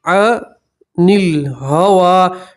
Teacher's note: وقف کریں گے تو ہوا ہی پڑھیں گے، ہوا ہی پڑھیں گے، واو کے اوپر کھڑا زبر ہی پڑھیں گے، یا پڑھی جائیں گی نہیں